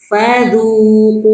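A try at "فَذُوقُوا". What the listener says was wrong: Fa-nya jangan fadzu. Ah, jangan. Enggak. Fa-nya jangan fadzu. Ah, jangan panjang. Fadzuqu.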